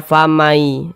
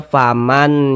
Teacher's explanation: bunyi nun sukun ini masuk ke huruf ya atau melebur ke huruf ya kita baca famai Jangan dibaca faman Yak jangan tapi kita baca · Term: idgham bhunah